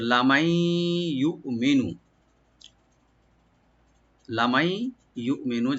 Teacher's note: হামজাকে right দিবেন যেন কলকলা যেন না হয়, শুধু গলার শেষ থেকে আনতে হবে রাইট দিয়ে।